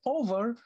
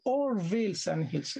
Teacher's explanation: But if he says over, that will break the rhythm. So he has to delete the V and to render it into one syllable only, not two syllables. So it's or.